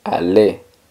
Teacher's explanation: igual que con parler, la R al final no suena